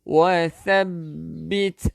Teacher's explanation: Hujung lidah keluarkan sikit untuk tha